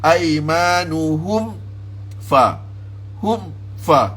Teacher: Kita kena tekan izhar, jelaskan mim mati itu dengan lebih kuat. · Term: izhar syafawi